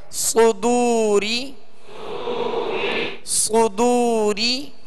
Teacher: صدو، را زیر ری، را کے نیچے زیر ہے، را کو باریک پڑھیں گے